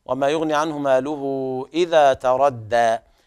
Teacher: مد الصلة الكبرى يعني الهاء تولد من إشباع الضمة